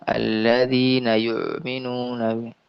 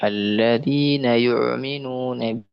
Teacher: ini adalah seperti orang berlebihan dalam mengucapkan hamzah seperti orang yang muntah